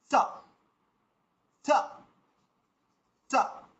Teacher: স বলার সময় জিভটা যেন দাঁতে গিয়ে ঠেকে, তারপরে সাউন্ডটা বের করার সময় যেন দাঁতটা খোলা হয় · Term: দন্ত স